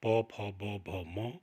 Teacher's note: इनका उच्चारण करते समय दोनों होंठ आपस में टकराते हैं, इसलिए इनको ओष्ठ्य कहा जाता है। इनका उच्चारण स्थान ओष्ठ है।